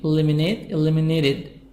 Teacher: In American we can make the T soft D